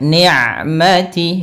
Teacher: jangan sampai masuk ke rongga hidung huruf ain